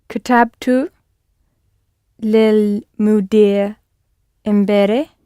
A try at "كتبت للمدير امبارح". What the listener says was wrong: Yes, good.